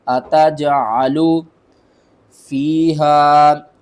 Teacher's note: قالوا اتجعلو، حمزہ زبر آ، تا جیم زبر تج، عین زبر ع، لام پیش لو، اتجعلو، جیم کے اوپر آپ نے قلقلہ کرنا ہے، جیم کو تھوڑا سا نا ہلا کر پڑھنا ہے